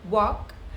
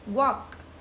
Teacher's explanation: walk is ending with a K sound, which is a soft sound, so it is not exactly from your vocal cords, it's from your mouth.